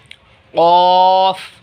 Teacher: क़ाफ़ हलक से अदा होगा